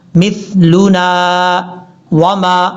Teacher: یہ جو سا ہے یہ بغیر سیٹی کے ساتھ پڑھا جائے گا